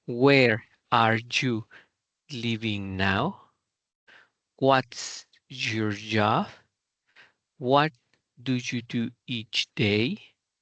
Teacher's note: empezamos fuerte y nos vamos hacia abajo